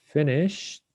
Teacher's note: the ed will be pronounced like a t after i mean when the ending sound of the regular verb is voiceless okay it's unvoiced that means no vibration